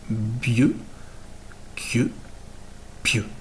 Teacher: Bleu, cle, pleu, contenus dans un certain nombre de mots, vont se prononcer, comme toujours disent les linguistes, avec un son mouillé pour donner bieux, quieux, pieux, comme dans coupe, ensemble, table.